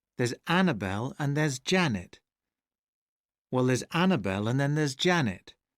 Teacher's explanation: see how his speech gets faster when he says more and more unstressed syllable next to each other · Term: unstressed syllables